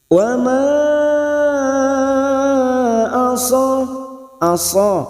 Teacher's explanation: Mad bertemu dengan Hamzah di lain kalimat Mad Jaiz lima harakat kita panjangkan